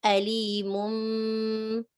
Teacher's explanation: أليم third category, so you have to pronounce meme with 2 counts. Instead of the noon sound of tanween, you pronounce the meme sound. Alimum, 1, 2 counts. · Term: iqlab